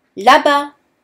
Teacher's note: The S of là-bas is silent.